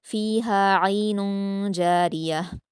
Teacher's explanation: आइनुन की तनवीन के बाद जीम है तो यहां इफा हो रहा है इसलिए आप इफा और गुना के साथ पढ़ेंगे · रा को यहाँ पर बारीक पढ़ा जाएगा ज़ेर होने की वजह से।